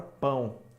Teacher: Na palavra pão, observe que esse O tem som desse U semivocálico. Por isso que aqui é a vogal e aqui é a semivogal.